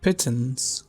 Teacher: We have the schwa sound in words like pittance, which is produced in the middle and central of your vocal tract